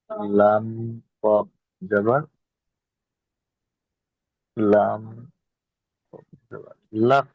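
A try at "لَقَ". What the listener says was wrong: হ্যাঁ, আপনি প্রথমে লামটাকে হ্যাঁ আপনি লামটাকে নিয়ে কফের সাথে মিলাচ্ছেন, সুতরাং লামটাকে উচ্চারণ করার সময় আপনাকে লামটাকে আগে বলতে হবে। তাহলে লাম কফ জাবার।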